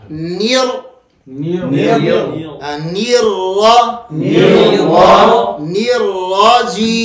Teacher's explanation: یہ نون اور را کو جب ملاتے ہیں, نون کو باریک اور را کو موٹا